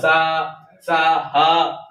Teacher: ऊष्मा गर्म ऊष्मा बाहर निकल रही है, उसे कहते हैं ऊष्म व्यंजन या संघर्षी व्यंजन